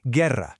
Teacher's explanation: You hear the G and you hear the E, but that U in the middle is totally invisible to your ear. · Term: hard G sound